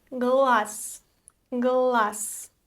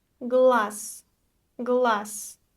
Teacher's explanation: The voiced consonant z loses its quality at the end, so we pronounce the voiceless s.